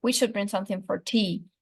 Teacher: stress is placed on the last lexical item which is T the tone is falling because statements are usually set with a falling tone · The focus here is broad, and that means everything is new information, and so the nuclear stress is placed on the last lexical item, which is tea. The tone is falling because statements are usually said with a falling tone, and there's no special reason for the speaker to use another tone here.